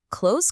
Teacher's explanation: close collapses into just one smooth syllable with a soft Z or S at the end